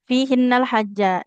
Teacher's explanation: Jimnya fathah. Di depannya nggak ada alif. Berarti nggak boleh panjang ya.